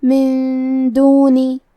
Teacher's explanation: دال کی ادائیگی زبان کے سر اور اوپر والے دانتوں کے اندرونی کناروں سے ہے. کلمت من کے آخری میں نون ساکن ہے. · اخفاء کا معنی ہے چھپا دینا، تو ہم نون ساکن کو چھپاتے ہوئے اور غنہ کے ساتھ یہ حکم کو ادا کریں گے